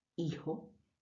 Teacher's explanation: lingüística pero que se produce arrastrando un poco el sonido tenemos una J una G más e i muy suave muy aspirada muy atrás